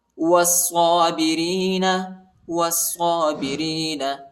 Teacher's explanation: وہ کو صاد کے ساتھ ملائیں گے، صاد پر شد آیا ہے، صاد کو شدت کے ساتھ سختی کے ساتھ پڑھیں گے